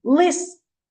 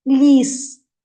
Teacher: ми скажемо лис це буде ось такий звуковий аналіз тому що л - це буде твердий приголосний звук а Якщо скажемо ліс то л м'який